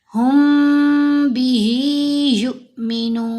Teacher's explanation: इफाए शफवी में मीम के ऊपर हम गुना करते हैं। हु ही यु मीनु अगर कोई पढ़े हुबी ही तो फिर उसने मीम का जो इदगाम है इफा है वो अदा नहीं किया फिर यह गलती है।